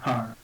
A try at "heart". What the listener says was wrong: Heart. Yeah, get the T at the end as well. You've got to get, because you've got